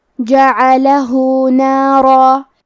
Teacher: کلمت جعلہ میں جیم پہ عین پہ اور لام پہ تینوں پہ زبر ہے تو ہم یہ تینوں زبر کو برابر سے ادا کریں گے۔ آخری میں ہاں پہ الٹا پیش ہے، یہاں حکم ہے مد صلہ صغرا، ہم اپنی آواز 2 مد کے برابر لمبی کریں گے